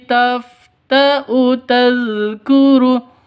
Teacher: wawu di sini sebagai tempatnya hamzah harus dibaca pendek, tidak boleh dibaca panjang. Alifnya ini tidak dianggap.